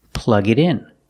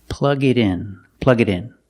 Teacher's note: The T in it changes to a fast D